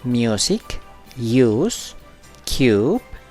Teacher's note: Este sonido es largo y redondeado, muy importante para una pronunciación clara y precisa. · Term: sonido largo de la U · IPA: /juː/